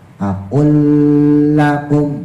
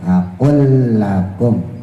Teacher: Jadi harus pas akl lakum. Jadi jangan ditahan lebih lama. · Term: idgham mislin